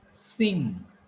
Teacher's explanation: It is nasal sound. Like in your mother tongue, you have anuswar.